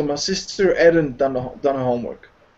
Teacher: So the H is dropped. You don't hear it.